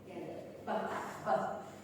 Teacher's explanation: plosive, b and b together. When both lips are put together. B. That's what we call as plosive.